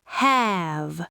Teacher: Have ends in the voiced V sound, long vowel.